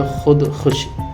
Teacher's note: ഹുദ്, ഖുഷ് പോലെയുള്ള പേർഷ്യൻ പദങ്ങളിലെ കാണുന്ന വാവ് നീട്ടാതെ ഉച്ചരിക്കണം